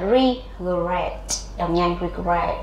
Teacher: ok âm tiết số hai nhận trọng âm